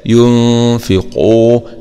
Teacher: ونفخم طبعا القاف لأنها من حروف خص ضغط انقض حروف استعلاء